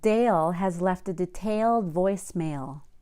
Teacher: notice that every word with the L in it sounded like it had two syllables